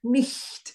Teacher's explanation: The CH is softer. Nicht. Let the air flow.